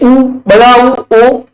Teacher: जिन स्वरों के उच्चारण में होठ वर्ताकार होते हैं उन्हें वर्ताकार स्वर अथवा वृत्तमुखी कहते हैं।